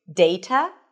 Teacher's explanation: In British English, you'll hear something closer to DEI-tuh, with a soft T.